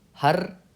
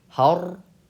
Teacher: हर यह है बारीक हर यह है पुर तो हमको इसे पुर पढ़ना है वन हर इना इना अब